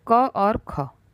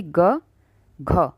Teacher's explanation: क और ख होंगे अघोष ठीक है और उसके बाद के तीसरा चौथा यह क्या होंगे सघोष